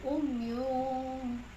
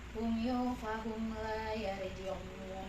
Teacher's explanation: Kemudian mun umyun un bertemu dengan huruf fa ya. Yang mana? Fa. Ya, bacaannya adalah ikhfa, sama-sama dan dengung.